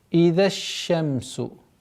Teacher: Свойство тафаши в букве шин ярко выражается, плюс еще потому, что она еще удвоенная.